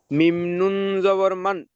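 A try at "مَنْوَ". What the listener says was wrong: মিম নুন ওয়াও জাবার মাও। এখানে নুন আর উচ্চারণ হবে না, নুনটা ডাইরেক্ট ওয়াও এর ভিতরে ঢুকে যাবে। এটাই হলো ঈদগামে নাকিসের কায়দা। ঈদগামে নাকিসের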